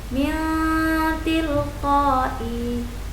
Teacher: Nun mati bertemu dengan ta, dibaca samar dan berdengung. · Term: ikhfa